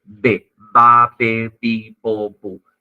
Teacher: La clase pasada, cuando vimos el cuadrito de la AFI, de la Asociación Fonética Internacional, habíamos visto que la B larga tiene una pronunciación bilabial, un modo de articulación bilabial. · Lleva la unión y el despegue de los dos labios. Oclusiva o explosiva, bilabial, ¿no?